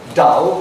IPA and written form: dʌl (dull)